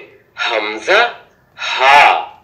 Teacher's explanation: হলকের শুরু হইতে হামজা হা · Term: মাখরাজ